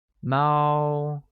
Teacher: Cat literally translates as 猫, which is pronounced with a high-level tone